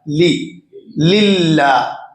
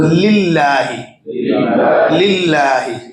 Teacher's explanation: اب یہ للہ اللہ اللہ کا وہ ہے ایک، لیکن اس سے پہلے زیر آ رہا ہے لی للہ، تو پہلا لام تو باریک پڑھیں گے ہی، دوسرا جو اللہ والا لام ہے لام جلالہ جسے کہتے ہیں وہ بھی باریک ہو رہا ہے اس سے پہلے زیر آنے کی وجہ سے